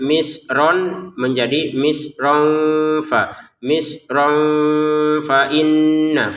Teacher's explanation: Misron bertemu dengan fa kita baca samar